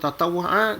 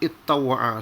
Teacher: Dia boleh sebut tatawwa'a, dia sama aja cuma ittawwa'a sebab ta dengan ta ni dia punya makhraj dia hampir sama. Jadi akhirnya dia idghamkan.